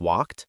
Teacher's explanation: After voiceless sounds like P, K, F, it's ta, like walked.